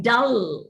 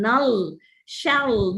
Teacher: Now, oh yes, the use of the dark l, whether it is used at the final, when the l is used in the final position, the back of the tongue also has to go and touch the velum, like dull.